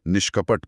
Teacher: विशेषकर जब विसर्ग से पहले इ या हो तो जीभ पीछे की तरफ मुड़ती है। इसे मूर्धन्य कहते हैं। इसलिए निह और कपट मिलकर मूर्धन्य श के साथ निष्कपट बनते हैं।